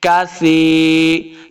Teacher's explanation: وکانت الجبال کثیبا، اس کاف کو موٹا نہیں کریں گے. کثی، سا پہ سیٹی کی آواز نہیں آنی چاہیے، نرمی کے ساتھ پڑھیں گے. کثی، یا مدہ ہے، اس کو دو حرکات لمبا کرنا ہے.